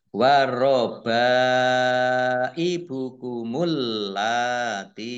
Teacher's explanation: mim sukun bertemu dengan huruf wau bacaan izhar syafawi dibaca jelas